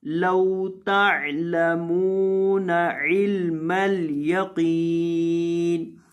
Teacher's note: لو یہاں لام کو لمبا نہیں کرنا